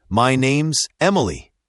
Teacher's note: the is is often very light, almost like a quick Z sound.